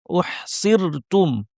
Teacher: এই রটা পাতলা হবে কারণ আগে জের আছে